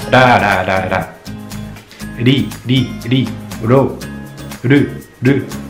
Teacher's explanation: la langue, elle tape contre le palais, l'avant du palais.